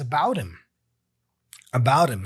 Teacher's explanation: So he drops the H